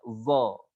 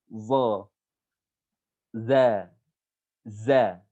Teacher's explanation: Bibir kita nggak dibulatkan, bukan uzo, bukan dibulatkan bibir ya, atau bibir kita dibentuk enggak sama sekali. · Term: huruf za